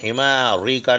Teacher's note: رے باریک پڑھی جائیں گی، رے کے نیچے زیر